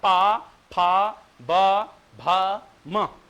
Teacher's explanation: प का उच्चारण दोनों होठों के आपस में जुड़ने पर होता है। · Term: ओष्ठ